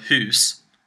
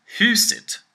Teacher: house, hus, is a flat tone. Huset is an up tone.